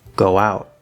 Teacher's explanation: the end of o is close to that w so we get a connection